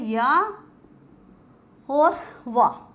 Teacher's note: ऐसे वर्ण जिनका उच्चारण करते समय वायु बिना बाधा के मुंह के बाहर निकल जाती है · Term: संघर्षहीन व्यंजन